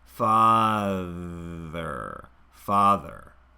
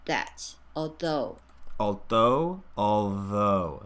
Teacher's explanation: This takes a lot of relaxation from the articulators to move through that voiced TH without stopping it.